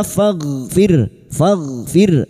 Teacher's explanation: ghain sukun jangan dipantulkan ya, bukan qalqalah